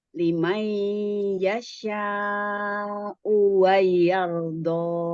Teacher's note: Lalu ro sukun ini dibaca tafkim atau tebal karena sebelumnya fathah.